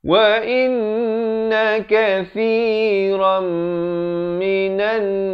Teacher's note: Idgham bi gunnah ya, berlaku dalam dua keadaan, sama ada nun mati atau tanwin bertemu dengan salah satu daripada 4 huruf, iaitu huruf ya, waw, mim dan juga nun. Terus masuk daripada kathiran jadi kathiram, tapi jangan lupa dengungkan dua harakat.